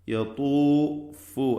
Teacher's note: മഹ്റജിൽ നിന്ന് തന്നെ ഉച്ചരിക്കണം യത്തൂഫു അതായത് മുൻപിൽ ഫാന് തൊട്ടുമുമ്പിൽ വാവ് വരുന്നു ചുണ്ടുകൾ രണ്ടും ചേർത്തുകൊണ്ടാണ് ആ ളമ്മിനെ ഉച്ചരിക്കേണ്ടത്